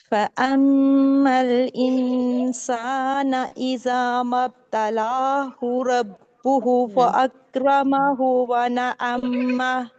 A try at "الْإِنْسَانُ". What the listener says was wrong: الانسان نہیں ہے, نون پہ پیش ہے. پھر پڑھیے.